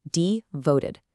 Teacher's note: Notice the stress on the second syllable.